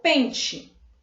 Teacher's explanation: Na palavra pente, ela finaliza com E, mas a pronúncia é de I, certo?